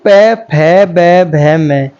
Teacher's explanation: ओष्ठ होठ की सहायता से बोला जाता है